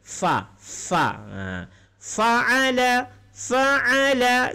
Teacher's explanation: Untuk fa sendiri hurufnya berasal dari makhraj bibir, berangin